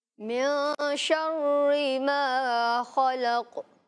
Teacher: یہاں نون ساکن میں آپ غنہ کر کے دکھائیں گے